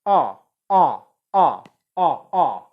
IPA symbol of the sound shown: ʌ